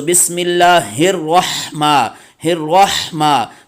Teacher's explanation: تو ہا کو آپ نے وسط حلق سے ادا کرنا ہے